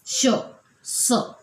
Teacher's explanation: उच्चारताना त्याचा जो वायू आहे किंवा त्याचा श्वास आहे तो मुखावाटेत जोराने उसासा बाहेर टाकल्याप्रमाणे याचा उच्चार होतो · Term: उष्मे